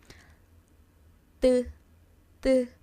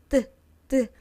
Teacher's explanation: Lower teeth. tt The tongue is kind of touching the back part of your teeth.